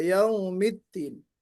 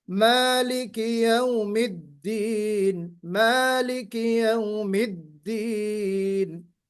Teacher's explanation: हमें थोड़ा सा दाल को बहुत वाज़ेह और आवाज में शिद्दत और बुलंदी के साथ पढ़ना है